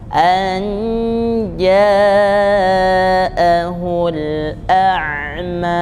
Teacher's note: Ini kita tahan pada ja-nya itu 2 ayunan. An ja'ahul a'ma, supaya tidak ragu panjangnya.